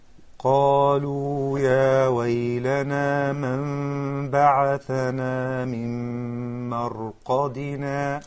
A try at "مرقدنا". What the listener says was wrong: Still the ra needs a little left in order to be مفخمة. If you say مرقدنا, then it is مرقق.